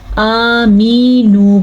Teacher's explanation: हमने जाने अनजाने में मीम के साथ या भी लगा दी